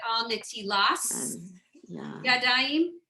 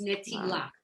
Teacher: Some of you may have heard growing up that maybe someone said al netilas yadayim, because in the more orthodox settings, they don't pronounce the t as a T sound, but more of an S sound.